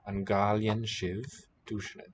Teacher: So basically it's a K, voiceless aspirated. Here the mutation triggers voicing, K to G.